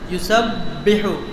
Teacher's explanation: দুই ঠোঁটের ভিজা জায়গা থেকে আওয়াজ বন্ধ থাকবে